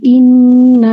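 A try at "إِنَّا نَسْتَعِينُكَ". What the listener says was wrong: ইন্না না, ইন্না, ইন্না নাতে এক আলিফ মাদ আছে, হ্যাঁ?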